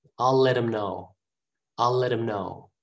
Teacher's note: him is a pronoun the ha is gone we just say m